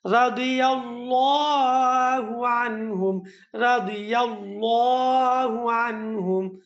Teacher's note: এখানের মধ্যে আল্লাহ শব্দ আছে, মোটা করে পড়তে হবে